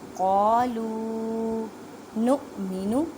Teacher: حمزہ ساکن ہے اس وجہ سے جھٹکا دے کے پڑھے